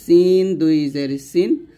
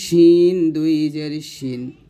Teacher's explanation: সিন দুই জের সিন, দেখুন সিনের মাখরাজ হলো জিহ্বার আগা সামনে নিচের দাঁতের মাঝে লাগিয়ে সিনটা উচ্চারণ করতে হবে